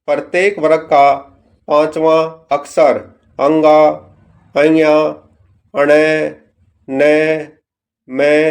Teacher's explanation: इनका उच्चारण मुख और नाक दोनों से होता है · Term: अनुनासिक या नासिक